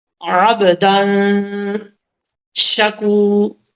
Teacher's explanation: کاف کے بعد واو ہے، واو مدہ، ایک الف کی مقدار، اس کو لمبا کر کے پڑھیں گے · دال کے اوپر دو زبر ہیں، آگے الف آ رہا ہے، الف کو چھوڑ دیں گے، شین آ رہا ہے، شین حروف اخفا میں سے ہے، تو یہاں پہ نون تنوین کا اخفا ہوگا